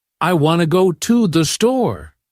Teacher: native speakers say, I want go store strongly, and the to and the become soft, almost disappearing. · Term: sentence stress